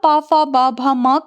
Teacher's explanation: इनका उच्चारण स्थान ओष्ठ होता है